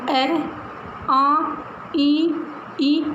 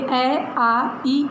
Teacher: अनुनासिक स्वर जिसमें श्वास वायु मुख और नासिका से बाहर निकलती है